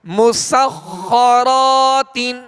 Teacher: مسخرات، میم سین کو باریک پڑھنا ہے، سین میں سیٹی کی آواز پیدا ہوگی اور خا حروف مستعلیہ میں سے لہذا پر یعنی موٹا کریں گے اور خا پر تشدید ہے لہذا دوہرا پڑھیں گے، 2 مرتبہ پڑھیں گے. را کو پر کریں گے، را پر زبر ہے، را کے آگے الف مدہ ہے، ایک الف کی مقدار میں کھینچ کر ادا کریں گے.